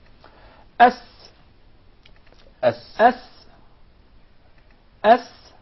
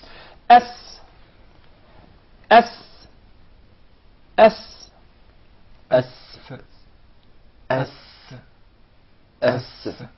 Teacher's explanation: But in the case of the Sin, you keep it inside. The Sin is articulated from the tip of the tongue in the palates of the two front top incisors at a point just above the two front lower incisors.